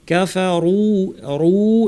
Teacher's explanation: এখানে র পেশ, রু ভারী এবং তারপর ওয়াও সাকিন থাকে, টান হবে। কাফারু ওয়া, রু কমপ্লিট করে ওয়া বলতে হবে, রুওয়া যেন আমরা না বলি, তাসদিদের মতো যেন না শোনা, যেহেতু পর দুইটা ওয়াও আছে এখানে, কিন্তু দুইটা ওয়াও সংযুক্ত হবে, আলাদা থাকবে।